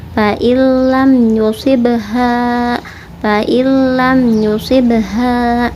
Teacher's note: Jadi nunnya melebur masuk ke dalam lam. Dan idgham kamil atau sempurna ya. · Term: idgham bila gunnah